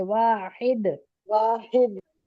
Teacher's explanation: दाल पे कलकला के साथ रुकेंगे